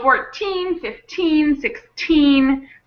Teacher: On 14, 15, 16, and all of the teens, the syllable, the teen syllable is stronger. So, 14, 15, 16, that's where the stress of the word is on the teen.